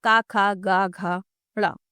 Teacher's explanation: जो क वर्ग के शब्द होते हैं क, ख, ग, घ, ण इनका उच्चारण कंठ से होता है